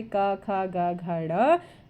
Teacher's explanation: जीभ के पिछले भाग से कोमल तालु का स्पर्श होता है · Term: कंठ ध्वनियां